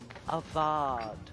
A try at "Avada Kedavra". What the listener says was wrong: It's a vod, not a vard. It's a Vada Kedavra. There's no R. I don't think there's an R, is there?